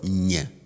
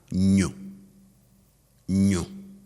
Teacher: So it's like doing that ny sound that you find in Espanol, that ny digraph in Twi, but instead of, doing it with a spread lips like we did for the regular ny sound, now you do it with some sort of roundness of the lips. So instead of ny, now we have nyu.